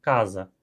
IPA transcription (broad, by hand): kaza